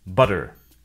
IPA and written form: ˈBʌɾɚ (mantequilla)